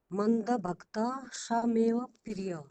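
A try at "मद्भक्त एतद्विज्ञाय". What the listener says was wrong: आप पढ़ पा रहे हैं, लेकिन जो जोड़ शब्द है ना उसमें थोड़ी गलतियां हो रही है।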